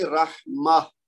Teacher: آخری جو گول تا ہے تائے تانیس یہ ہا کی آواز میں بدل جائے گی